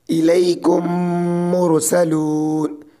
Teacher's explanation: میم ساکن کے بعد میم آئے تو میم کو میم سے ملا کر غنہ کے ساتھ پڑھا جائے گا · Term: ادغام شفوی